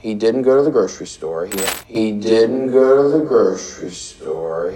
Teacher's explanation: La segunda D la pronuncias como una R en español